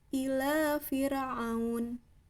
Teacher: Fir, jelas ya, ujung sisi lidah dengan rongga atas.